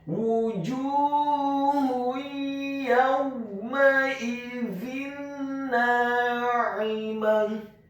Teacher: Kata na'imah, huruf nunnya dibaca tipis, fathah 2 harokat karena setelahnya ada alif. Kemudian huruf ain-nya ditekankan keluar dari tenggorokan bagian tengah, kasrah 1 harokat. Huruf mim-nya dibaca fathah 1 harokat. · Dan di akhir ayat huruf ta marbutahnya diubah menjadi huruf H yang tafkhim yang tebal dan dibaca sukun